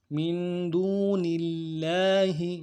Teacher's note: اب یہ لام کو باریک پڑھنا ہے